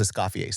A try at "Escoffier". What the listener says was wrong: Oh, Escoffier. You're saying it wrong. You're putting the emphasis on the wrong syllable.